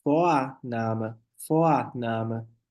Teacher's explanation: Esse R nem aparece, pessoal. Né? Não fica nem um resquício dele. Vira A mesmo. · Lembrar, esse R no alemão, ER, né, vira sempre A. O R em geral, né, vira sempre A.